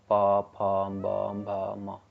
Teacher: प बोलोगे तो दोनों होठ आपके टच होंगे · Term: ओष्ठ